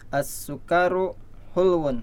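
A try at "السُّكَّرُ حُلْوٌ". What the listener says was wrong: As-sukkaru ya, kafnya jangan dipanjangin.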